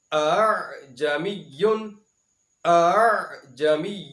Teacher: پہلے حمزہ کو جھٹکے سے پڑھا جائے گا اور دوسرے حمزہ کو نرمی سے ادا کرتے ہوئے لفظ کو ادا کر دیا جائے گا